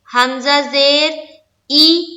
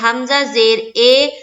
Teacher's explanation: حمزہ زیر ای یہ ہوا معروف، اور اگر کوئی پڑھتا ہے حمزہ زیر اے تو یہ ہو گیا مجہول۔ تو ہمیں مجہول نہیں پڑھنا ہے، ہمیں معروف پڑھنا ہے۔